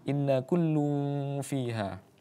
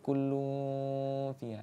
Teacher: antara dengung yang satu ya ini inna dengan kullu itu harus seimbang, yaitu paling tiga ketukan atau 3 harokat ya, atau satu setengah alif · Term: gunnah musyaddadah